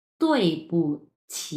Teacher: ছি উচ্চারণ করতে হবে আপনাকে। ছি এবং ৩ নাম্বার টোন মানে হচ্ছে ঢেউ খেলানো হবে, হ্যাঁ? ঢেউ উঠবে আপনার উচ্চারণের মধ্যে।